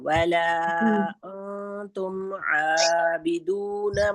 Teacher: انتم میں حمزہ ہے تو ہم اس کو منہ کے خالی حصے سے ادا کریں گے، اس میں بالکل حلق کا استعمال نہیں کریں گے.